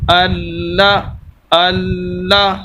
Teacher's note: تو شد والے جو دو اصول ہیں وہ پائے جائیں گے کہ لام کو 2 مرتبہ پڑھیں گے اور اسی طرح سخت کر کے پڑھیں گے، ہلکی سی آواز کو رو کر پڑھیں گے.